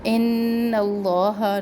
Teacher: نون مشدد غنہ ایک الف کے برابر اس میں جلالہ کو اوپر پڑھیں گے کیونکہ اس میں جلالہ کے لام سے پہلے نون کے اوپر زبر ہے.